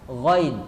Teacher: Kalau ghain ini dari ujung tenggorokan